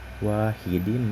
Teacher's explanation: Nah, di situ terdapat hukum idgham bigunah karena terdapat huruf berharokat tanwin yang bertemu dengan huruf-huruf idgham bigunah. Jadi idgham bigunah itu dibaca dileburkan dengan dengung.